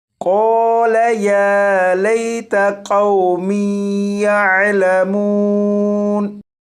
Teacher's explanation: یہاں پر واو ساکن سے پہلے زبر ہے، لہٰذا یہ واو لین ہے، اور یا لین اور واو لین کو بغیر کھینچے پڑھیں گے